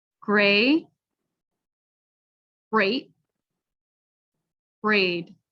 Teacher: All right, but I want to emphasize that the held T, you are pronouncing a sound. You're starting the T sound, you're just not fully releasing it. And it is actually, there is some pronunciation there.